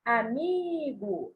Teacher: a sílaba tônica, que a gente fala por um maior tempo, com maior intensidade, é o mi, a sílabazinha do meio.